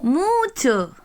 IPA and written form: mu:tʃo (a lot)